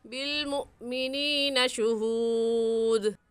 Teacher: بالمؤمنین میں حمزہ ساکن ہے، اور حمزہ ساکن پر جھٹکا دے کر پڑھتے ہیں